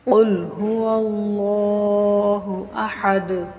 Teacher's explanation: قاف موٹا پڑھنا ہے، اس کو کاف سے نہیں ملانا، باریک کاف سے اس کو موٹا اور پر کر کے پڑھنا ہے